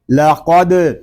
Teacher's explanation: یہاں قاف حروف مستعاریہ میں سے ہے، اس کو پر پڑھیں گے. آگے دال ساکن ہے، اس میں کلکلا خوب ظاہر ہوگا